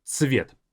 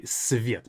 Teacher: It's a slight difference, but it's a bit more of a sharper ц in the beginning versus just simply s sound. So цвет.